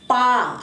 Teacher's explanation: पा आपके सांस को रोक ले रहा है, निकलने नहीं दे रहा है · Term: ओष्ठ्य